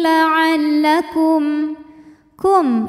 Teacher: karena mim sukun menghadapi huruf selain mim dan ba yaitu huruf Ta Maka mim sukun dibaca jelas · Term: izhar syafawi